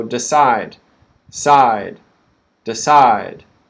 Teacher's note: D, d, d. The second syllable is stressed. So decide, side, decide.